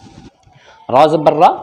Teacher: را کے اوپر زبر ہے تو را موٹا پڑھا جائے گا